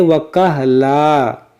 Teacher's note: یہاں پر دیکھیں ہماری سانس ٹوٹ گئی، تو ہم اس کو پڑھیں وَكَهْلًا، کیونکہ یہاں پر دو زبر تھا، اور دو زبر پر جب وقف کیا جاتا ہے تو اس کو الف سے بدل دیا جاتا ہے، وَكَهْلًا۔